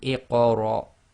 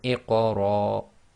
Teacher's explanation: you literally shorten the Ra, which would normally be one long, cut it down to about half the length. So it'd be Iqra instead of Iqra.